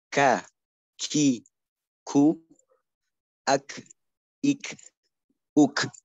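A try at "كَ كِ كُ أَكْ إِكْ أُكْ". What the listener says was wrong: Ya, tinggal nanti mungkin penerapan sifatnya ya, jangan. Nanti untuk hams itu kaf itu jangan berlebihan juga. Ak, ik itu juga berlebihan. Cukup ak, ik, uk.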